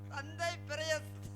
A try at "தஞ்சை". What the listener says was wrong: தந்தை இல்ல தம்பி, தஞ்சை.